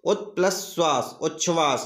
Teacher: तीसरा यानी इसका गा पॉइंट है ता का मेल यदि सा से हो, यानी ता का मेल जब सा से हो तो क्या परिवर्तन होता है? ता का चा और सा का छा बन जाता है।